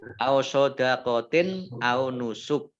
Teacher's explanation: kasrah tanwin bertemu dengan huruf alif bacaan izhar dibaca jelas